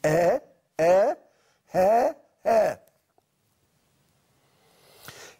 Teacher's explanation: يعبر بصوتين من مخرج الحنجرة، الهاء والهمزة